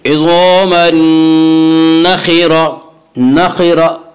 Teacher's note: नखिरा खा को पुर पढ़ेंगे, खा हुरूफ मुस्तालिया में से है। हुरूफ मुस्तालिया 7 हैं जिनका मजमुआ खुस्सा ज़ग़्त क़िज़ है, जो हमेशा हर हाल में पुर पढ़े जाते हैं। · नखिरा की रा को पुर पढ़ेंगे